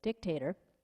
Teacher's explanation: the tip of your tongue for the d d and then the k is the middle of your tongue and then the ta is back to the front dictator and then the r is kind of rolling around in · these things for the harmonica it's just tongue articulation dictator and you're using the tip of your tongue for the d d and then the k is the middle of your tongue